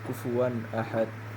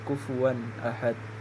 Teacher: maka huruf wau dengan harakat fathah dan tanwin tidak boleh dibaca dengung. Harus dibaca dengan jelas yaitu kufuwan ahad. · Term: izhar halqi